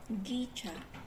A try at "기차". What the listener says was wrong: 기차. Very subtle problem, but this is not wrong vowel. Usually, not 기차. Okay, 기차. Short vowel, just a little. Sometimes long vowel, sometimes short vowel, but usually Korean is a long vowel is not that many.